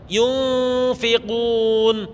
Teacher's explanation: Saat ini ada kalanya terdengar suara eng, itu ketika bertemu dengan fa, qaf, kaf, dha, shad sama za. Yunfiqun, suara bon beten suara non, beten suara en, tapi suarana eng.